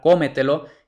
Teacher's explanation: ahora la sílaba tónica es la cuarta empezando desde el final es decir la trasante penúltima Entonces es sobresdrújula y las sobresdrújulas